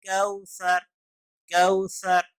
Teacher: باریک زبان کی نوک اوپر والے دانتوں کے ساتھ ٹکرائیں گے تو سا ادا ہوگا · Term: مخرج